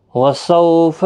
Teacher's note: واولین ہے، تھوڑا نرمی کے ساتھ، آدھے الف کی مقدار کے برابر کھینچیں